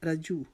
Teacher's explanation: را کو موٹا پڑھیں گے کیونکہ را کے اوپر زبر آ گئی ہے. جیم کی پیش کو جلدی سے ادا کریں گے.